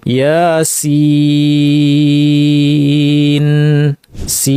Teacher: কিন্তু সিন বলতে গেলে 3টা অক্ষর লাগে, সিন ইয়া নুন, এবং মাঝখানে একটা ইয়াটা মাদ্দের ইয়া, কারণ আগে জের আছে, আর লাস্টে নুন সাকিন, তাহলে মাদ্দের ইয়া এর পরে স্থায়ী সুকুন আসলো, কাজে এটা আমরা 3 আলিফ টানবো। ইয়াসিন, সিন, এইভাবে করে আমাদের 3 আলিফ টেনে এটা পড়তে হবে।